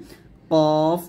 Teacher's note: কফ জিহ্বার গোড়া তার বরাবর উপরে তালুর সঙ্গে লাগবে, কফ মোটা করবেন।